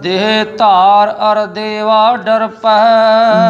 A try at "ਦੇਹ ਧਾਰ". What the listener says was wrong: ਦੇਹ ਧਾਰ, ਦੇਹ ਧਾਰ ਚ ਫਰਕੇ ਪੈ ਗਿਆ ਵੀ ਹਾਹੇ ਨੂੰ ਵੀ ਲਾਂ। ਦੇਹ ਧਾਰ ਅਰ ਦੇਵਾ ਡਰ ਪੈ, ਲਗਾ ਮਾਤਰਾ ਦਾ ਧਿਆਨ ਰੱਖਣਾ।